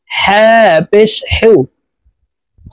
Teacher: হলকের মধ্যখান থেকে হা হরফ উচ্চারণ হবে, কারণ হার মখরাজ হলকের মধ্যখান থেকে হবে।